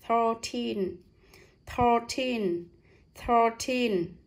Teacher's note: Thờ. Đây âm y, tờ với y là t, với âm n cuối là teen, nhấn mạnh âm teen này.